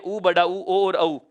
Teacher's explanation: वे स्वर जिन्हें बोलते समय होंठ वृत्त के आकार में गोल खुलते हैं या वृत्त की तरह मुख हो जाता है, उसे वृत्ताकार या वृत्तमुखी स्वर कहा जाएगा। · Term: वृत्ताकार स्वर